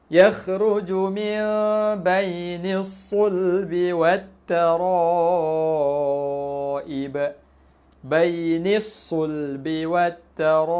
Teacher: As-sulbi dengan at-taraibi. Dua-dua tu kita tak baca lam dia. Jangan baca bainil sulbi wal. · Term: aliran syamsiah